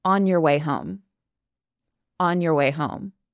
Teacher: Your, Y-O-U-R, your often turns into your, kind of like a Y-E-R, your. On your way home.